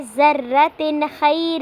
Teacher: اظہار ہو رہا ہے کیونکہ تنوین کے بعد حروف ہلکی میں سے خا آ رہا ہے، حروف اظہار میں سے خا آ رہا ہے تو اس لیے ہم نے تنوین کو ظاہر کر کے پڑھنا ہے.